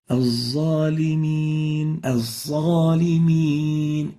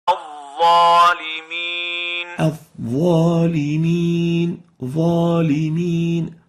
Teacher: the dha is characterized by being loud, loose, elevated, adherent, and velarized. It has tafkhim.